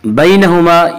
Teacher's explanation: यालीन वो या जो साकिन हो और इससे पहले ज़बर हो। यालीन को नरम आवाज़ के साथ पढ़ेंगे।